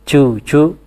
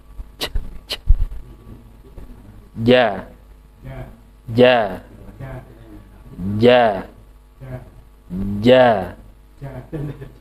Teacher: ketika baca Quran memang dilatih supaya tidak ada hams ya tidak ada dorongan